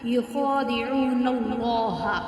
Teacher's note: خا جو ہے اس کو 1 الف اور 2 حرکات کے برابر کھینچیں گے · اللہ اور الف سے پہلے جو ہے وہ زبر ہے تو اس کو ہم موٹا پڑھیں گے